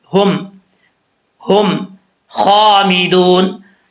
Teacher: ये जो हा है दो आंखों वाली, इसका ताल्लुक सीने की तरफ है, भारी आवाज़ के साथ पढ़ी जाएगी।